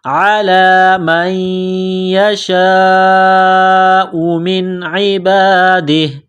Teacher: جب وقف کریں گے تو ہا کو سائلنٹ کریں گے.